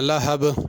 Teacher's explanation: لہب، اس میں بھی با پہ قلقلہ ہے، لہب نہیں پڑھنا، لہب تھوڑے سے ہلا کے پڑھنا ہے با کو